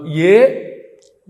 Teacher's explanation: ఏ అన్నప్పుడు కంఠము తాలువు రెండూ కలిపి పనిచేస్తాయి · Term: కంఠ తాలుహు